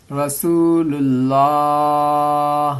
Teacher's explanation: محمد، را زبر را، سین واو پیش سو، رسو، لام لام پیش لل، رسول، لام کھڑا زبر لا، کھڑا زبر میں ایک الف کے برابر کھینچیں گے